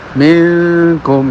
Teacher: Artinya ke bawah itu semakin kurang ke pangkal hidung ya. Minkum ya suara nun itu kurang ke hidung ya. Bukan berarti sama sekali tidak ya, kurang gitu aja.